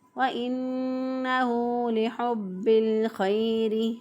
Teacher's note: ہا کو وسط حلق سے ادا کیا، با مشدد حرف پر جو ہے وہ اس کو مضبوطی اور قوت سے پڑھتے ہوئے ادا کریں گے